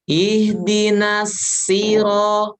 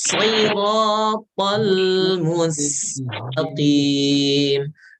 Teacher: Kalau yang shad isti'la. Berarti apa konsekuensinya kalau sifatnya isti'la? Konsekuensinya dibaca tebal.